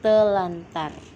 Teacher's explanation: bunyi r dan r pada kata terantar diubah menjadi Bunyi l dan R sehingga menjadi telantar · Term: disimilasi fonemis